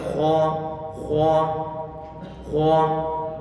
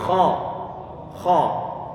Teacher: tempat keluarnya huruf kha itu di bagian tenggorokan, bukan di bagian bibir kita. Sehingga di saat kha dalam kondisi fathah, jangan sampai nanti ada bibir yang mengambil peran di sana.